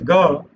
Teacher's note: So ga is actually another variation of ka, which you get by actually activating your vocal cords, right? You basically say ka, but at the same time, if you activate vocal cords, you get the sound ga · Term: vocalization